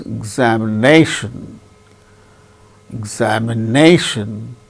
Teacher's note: fourth syllable gains primary stress more importance another word also another syllable also gains little bit less importance